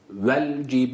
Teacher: B'yi uzatırken a sesi vermedik ince bir harftir bir elif miktarı e a arası bir sesle